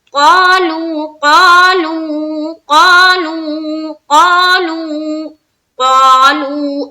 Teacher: قالو قاف کو بھی منہ بھر کر ادا کرنا ہے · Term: موٹے حرف